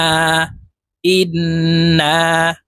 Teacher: তিন সেকেন্ড পরিমাণ গুন্নাহ করে ধরে রাখবো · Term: ওয়াজিব গুন্না